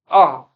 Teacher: जो आ है इसको मध्य स्वर बोलते हैं क्योंकि यह जीभ के मध्य भाग से बोला जाता है।